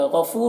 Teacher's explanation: غفور میں غین کو پر پڑھیں گے، یہ حروف مستعلیہ میں سے ہے